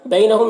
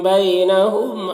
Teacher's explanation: بینہم، یہاں پر یا لین ہے، اسے نرم آواز کے ساتھ جلد پڑھیں گے، ہم کے میم مزار شفوی ہو رہا ہے، اور یہاں پر نون ساکن کے بعد لام حروف یرملون میں سے تو ادغام تام ہوگا، نون کو لام سے ملا کر بغیر غنہ کے پڑھیں گے۔